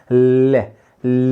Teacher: दोनों गाल को छूकर वायु बाहर निकलती है, जीभ की साइड से बाहर निकलती है। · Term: पार्श्विक